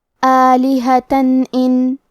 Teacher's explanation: اظہار کا معنی ہے ظاہر کرنا، اور کیونکہ تنوین کی اصلیت نون ساکن ہے تو ہم یہاں تنوین ظاہر کریں گے اور اسے نون ساکن پڑھیں گے اور بغیر غنہ سے یہ حکم کو ادا کریں گے